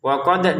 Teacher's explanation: Waqod dalnya dipantulkan ya